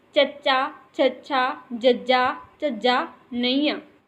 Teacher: तालवी दे विच जीभ का अगला हिस्सा वो कोमल तालू नूं छूहे